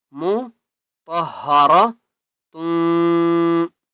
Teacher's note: تم تا کو واو کے ساتھ ملائیں گے